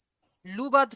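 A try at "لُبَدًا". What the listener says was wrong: এখানে লুবাদ হবে না, লুবাদা।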